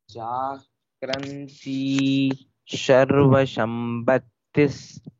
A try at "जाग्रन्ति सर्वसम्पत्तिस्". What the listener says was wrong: It's not Sharva, Sarva, Sarva. Sa is sharp sound. Sarva. Sarva Sampattis, that is you are correct. You are pronouncing correctly. That sound should be here also. Sarva Sampatti. Jagranti Sarva Sampattis. Sa should be corrected. It's Sarva. It is not Sharva.